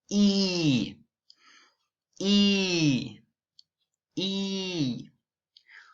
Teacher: The lips are tense and in smile position. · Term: E vowel sound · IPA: /i:/